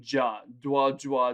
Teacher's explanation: dwaj you get that sound if you do it fast enough da wa will regularly slur to jah